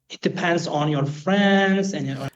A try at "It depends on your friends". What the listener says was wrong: That on for me is a little bit overstressed.